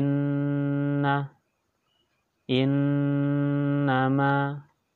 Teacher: dua harokat deh dua ketukan ya dua ketukan tidak boleh lebih dari dua